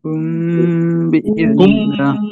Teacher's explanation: মিম সাকিনের ইকফা হয়েছে, এই কারণে গুণনা সহ পড়তে হবে।